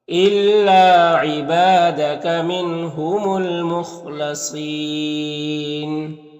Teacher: यहाँ पर नून साकिन के बाद हा है हुरूफ हल्की में से, तो नून में इज़हार हकीकी होगा, नून को ज़ाहिर करके जल्द पढ़ेंगे। यहाँ पर अलिफ लाम हुरूफ कमरी मीम के शुरू में है, तो लाम को पढ़ेंगे, अलिफ को नहीं पढ़ेंगे।